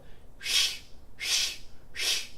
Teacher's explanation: You'll notice that there's no vibration because you're not using your voice.